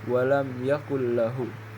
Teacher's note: Contoh dari idgham bila gunnah ialah walam yakul lahu, harus dibaca walam yakul lahu, yang di situ nun mati bertemu dengan lam dan kita baca walam yakul lahu, tidak ada dengung di situ